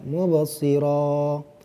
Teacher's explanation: Setiap huruf yang berharokat fathatain, an, mubasiron, kemudian diwakafkan, diberhentikan. Jadi huruf ujungnya tadi diganti dengan bacaan panjang. Panjangnya dua harokat, mubasiro. Jadi ini namanya mad iwad anit tanwin.